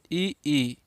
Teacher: ई जब बोलेंगे तो आपका ओठ फैल जाएगा।